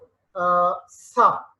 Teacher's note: as it has to come out of teeth ridge, it faces friction. Okay, so for example, the sound s sound.